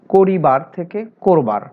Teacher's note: 9, সাধু ভাষায় ব্যবহৃত পূর্ণাঙ্গ শব্দ কিংবা ক্রিয়াপদের বানানে হ্রস্বইকার আছে, কিন্তু চলিত ভাষায় সে হ্রস্বইকার বিলুপ্ত হলেও তার পূর্ববর্তী অ সাধারণত ওকারের মতো হয়, যেমন করিবার থেকে করবার।